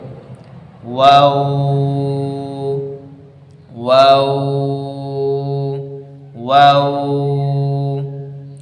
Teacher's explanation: এই যে দুই ঠোঁট গোল হচ্ছে, দুই ঠোঁট মিশছে কিন্তু এই দুই সাইডে মিশছে কিন্তু মাঝখানে ফাঁকা, এই যে ওয়াও, ওয়াও, দুই ঠোঁট মিশছে মাঝখানে গোলাকার ফাঁকা। এখানে বলছে ঠোঁটদ্বয়ের দুই ঠোঁট উভয় পার্শ্ব মিলিত হয়ে মধ্যখানে গোলাকার ফাঁক হয়ে ওয়াও